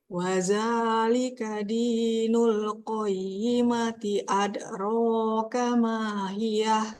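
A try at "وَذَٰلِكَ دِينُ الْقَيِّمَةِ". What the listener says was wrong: Sip, mantap. Ya bisa ya, alhamdulillah.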